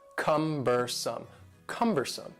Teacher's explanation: The word cumbersome has 3 syllables, and the stress is on the first syllable.